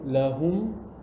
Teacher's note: The Meem Saakinah will be mixed into the following Meem. So they become one. Like for example, lahum, there's a Meem Saakinah at the end, lahum. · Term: idghaam shafawi